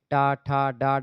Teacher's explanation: ड ढ ये सब है टा ठा डा ढ ये सब मुर्धा से बोली जाते है मुर्धा पर जीभ जाकर के टच होती है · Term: मूर्धन्य व्यंजन